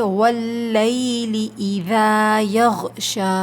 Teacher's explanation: اذا کے بعد ذال کے بعد جو الف ہے یہ الف مدہ ہے، الف خالی سے پہلے زبر ہے تو اس کو ہمیں 2 کاؤنٹس کھینچنا ہے۔ یغشا کے آخر میں یہ کھڑا زبر ہے، اس کو بھی ہم 2 کاؤنٹس کھینچ کر وقف کریں گے، ٹھیک ہے۔